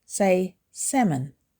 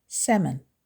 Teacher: It has 2 syllables and the stress is on the first syllable.